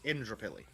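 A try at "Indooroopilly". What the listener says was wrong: There is not a R after the D. No. No.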